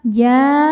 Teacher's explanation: Mad tabi'inya adalah alif didahului baris fathah, kemudian hamzahnya a, satu kata yaitu kata jaa. Maka jim dipanjangkan bisa 4 bisa 5 harokat. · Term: mad wajib muttasil